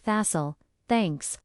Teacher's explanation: The T in that's is soft. It blends into all. It sounds like thassle, thanks.